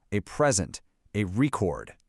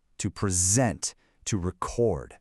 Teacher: So, if it's a noun, you stress that first syllable, a present, a record. But if it's a verb, watch this. The stress shifts to the second syllable.